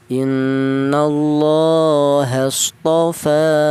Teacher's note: Fa dibaca panjang panjangnya satu alif atau dua harakat atau dua ketukan